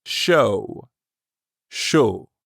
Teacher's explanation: i have again and then which means the word shou is pronounced like the english word show but you stop right before you start closing your lips for the w show show let's try it repeat after me [Music] shoe now